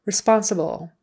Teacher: Responsible, the accent is on the second syllable.